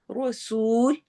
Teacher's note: را ہیوی ہوگا، سو سین میں سٹی والی آواز ہوگی، واو مدہ ہوگا